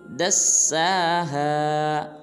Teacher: دال کو سین مشدد کے ساتھ ملائیں گے، سین کو ایک الف مقدار لمبا کریں گے اور پڑھیں گے دساہا۔